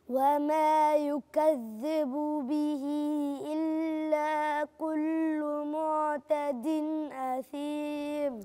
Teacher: يبقى أنا عندي الهمزة لازم تبان، ما تتكلش. هي بلاش ما أجي في بعض الحروف تقوم تلين مني قوي وتروح، ما حسش معالم الحرف، لازم أبقى مميز لأن ده هنا إظهار.